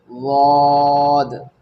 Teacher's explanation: ज़ुबान की करवट या किनारा जब ऊपर के आखिर के 5 दांतों के मसूड़ों में यानी 5 दांतों के मसूड़ों में लगे तो वौद अदा होता है